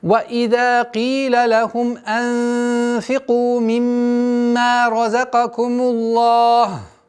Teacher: При остановке дамма аннулируется и переходит в сукун. Долгота остается в размере двух огласовок. Хотя есть варианты 4 и 6, но так как мы изначально выбрали при остановке, тематической остановке, причинной остановку в размере двух огласовок и остается. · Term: тематическая остановка